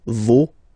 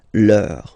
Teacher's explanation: even if you've got this final S, you don't pronounce it